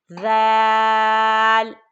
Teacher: ذال نرم حرف ہے، زبان کی نوک اوپر والے دانتوں کے سرے کو لگا کر پڑھیں، ذال، اور یہ ہے زا، اس کو سختی سے پڑھتے ہیں، اس میں سیٹی کی آواز ہوتی ہے، زا، تو یہ ذال اور یہ زا، دونوں میں بہت زیادہ فرق ہے۔